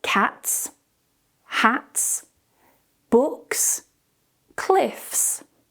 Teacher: When the sound before the S is a voiceless sound, so no vibration, we pronounce the final S as a S.